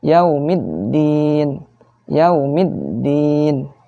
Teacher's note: Jadi harus bukan dipantulkan, ditasydidkan ya. Ada tekanannya.